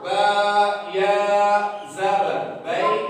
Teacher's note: या जो है ये मुंह के अंदर खाली हिस्से से अदा होता है